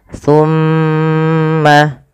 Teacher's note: Pada lafal summa ditahan dulu. Lafal mimnya ditahan. Jangan langsung dilepaskan.